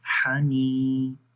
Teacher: یا کے اوپر جزم ہے اور اس سے پہلے زیر ہے، تو یہاں پر ایک الف کے برابر لمبا کرتے ہیں